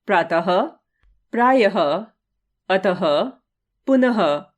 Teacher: इसका उच्चारण आधे ह के समान होता है। इसे विसर्ग चिन्ह द्वारा दर्शाया जाता है।